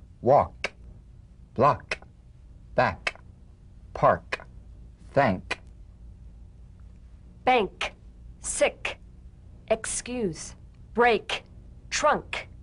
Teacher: with the tongue in the G position let the tongue spring away in the soft unvoiced click of the cave drumbeat feel a crisp tap and a pulsation